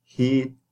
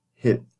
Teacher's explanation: E as in heat, and then you shorten it, it becomes hit.